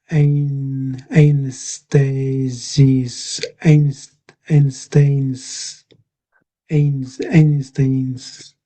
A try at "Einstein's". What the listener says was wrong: Nearly. So we just missed the s, the plural, or the possessive s. So it's Einstein. Einstein. Einstein.